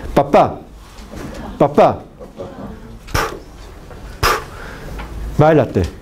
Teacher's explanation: Cuando usted pronuncia estas consonantes, los dos labios se juntan, se juntan. Nunca se acercan, nunca se aproximan, sino se juntan.